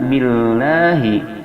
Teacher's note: billah tarkik cara bacanya tipis, yaitu dengan a, dikarenakan lafaz Allah ini sebelumnya ada kasrah, sedangkan billah dipanjangkan 2-5 harakat sebagaimana mad zaid munfasil.